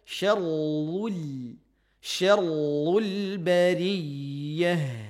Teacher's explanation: Ra ditebalkan. Ra tasydid dhammah nih kan. Syarrul tetap menipiskan lamnya. Lam sukunnya.